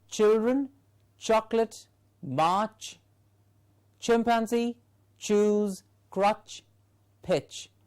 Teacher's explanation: the ch is a palato-alveolar sound. In the production of these sounds, the tip or the blade of the tongue and the teeth ridge are the two articulators. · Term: ch sound